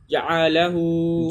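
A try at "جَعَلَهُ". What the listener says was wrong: जअलहु ना, जअलहु, जअलहु, क्योंकि एन के ऊपर भी तो जबर है, खींचना नहीं है, जअलहु,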